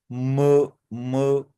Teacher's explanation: 18 जो हमारी साउंड है दैट इज म म ठीक है यह बाय लेबियल भी है यानी लिप्स की हेल्प से भी हम इसे और नेजल नाक से भी प्रोड्यूस करते हैं